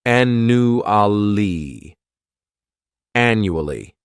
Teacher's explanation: this word has four syllables and the stress is on that first syllable the second syllable it's like you're just saying that letter U